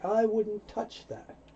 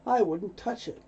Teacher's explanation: Two T's, so you only hear one.